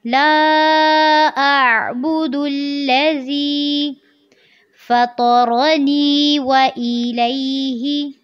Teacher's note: الف سے پہلے زبر ہے اور آلریڈی اس کے اوپر مد بھی ہے تو اس کو آپ نے زیادہ لمبا کرنا ہے